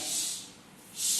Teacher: ऊष्म व्यंजन, इनको आप बोलिए, सीटी की सी आवाज आती है